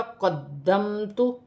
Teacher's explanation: دال جو ہے مشدد ہے، اسے جماؤ کے ساتھ پڑھا جائے گا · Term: دال مشدد